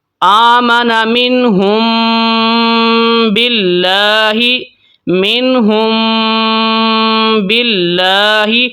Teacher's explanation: یہاں پر بھی ہم میم کے اوپر غنہ کریں گے، غنے کے ساتھ اخفا کریں گے، مطلب اس کے اوپر ہم نے رک کے جانا ہے تھوڑی دیر کے لیے، 2 یا 3 سیکنڈ کے لیے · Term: اخفاء شفوی